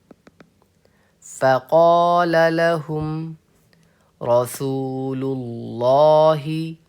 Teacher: यहां पर लाम को हम पुर करके पढ़ेंगे